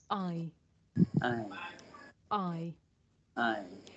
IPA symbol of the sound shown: aɪ